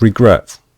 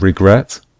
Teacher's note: With regret, we stress the last syllable, the final syllable.